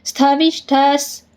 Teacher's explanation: ಷ್ಟ ಮುಂದೆ ವಿಸರ್ಗ ಇದೆ ವಿಸರ್ಗದ ಮುಂದೆ ಸ ಇದೆ ಅದಕ್ಕೆ ಅರ್ಧ ಸ